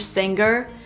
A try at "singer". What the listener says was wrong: We don't say singer. The G is not pronounced with a hard G sound. Singer is not correct. We say singer. Make a nasal sound with the NG. Singer. And then link to the R sound. Singer. Singer.